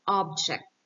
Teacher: it is something that you can see and touch that is not alive, like object. The stress is on the first syllable. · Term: word stress